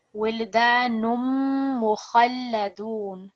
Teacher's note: Over here, we're joining this dhammatain with the mim mushaddad. So you're not going to hear the sound of the dhammatain, but you're going to hear a slight nasal sound when you're joining with the mim mushaddad.